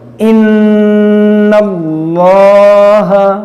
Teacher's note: یہاں پر دیکھیں نون مشدد ہے، اس میں غنہ کریں گے، اور یہ اسم جلالت اللہ عز و جل کے لام سے پہلے زبر ہے تو اس لام کو موٹا کریں گے، اس میں غنہ کریں گے اور اس کو موٹا کریں گے.